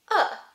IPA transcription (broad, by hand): ə